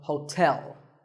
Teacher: There are 2 syllables, ho and tell, like the English word tell as in tell me. The stress is on the second syllable, so hotel